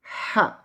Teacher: Huruf H kecil keluar dari tenggorokan. Ha. Harus ada angin yang keluar dari mulut kita. Adik-adik bisa coba tangannya ditaruh di depan mulut.